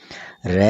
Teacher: आगे है प्रकंपित व्यंजन, जिसको बोलते हैं लुंठित व्यंजन। इसमें जीभ का 2-3 बार कंपन करना पाया जाता है। र जो है ये प्रकंपित व्यंजन है।